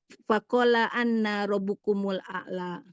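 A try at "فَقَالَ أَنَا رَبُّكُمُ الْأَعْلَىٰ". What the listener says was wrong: Fakola ana rob, jangan panjang Bu.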